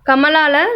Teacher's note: ஸோ இந்த லாவும் வந்து பார்த்திங்கன்னா முதல்ல இந்த லா வந்து கமலாவில் லா வருது இல்லையா, அந்த லா வந்து நாக்கோட இது வந்து அந்த நாவின் நுனி வந்து மேல் பற்களின் அடிப்பகுதியை தொடுவதால் லகரம். ஸோ இந்த லா வந்து பல்லோட எண்டு பாயிண்ட்டு, அதாவது பல்லோட அடிப்பகுதியில் தொடணும்.